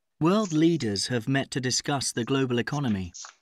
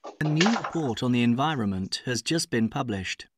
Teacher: have and has and been are always weak, or almost always weak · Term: weak forms